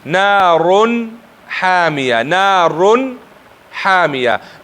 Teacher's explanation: نارون کې تنوین ښکاره او حامیه کې حروف حلقي ښکاره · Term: اظهار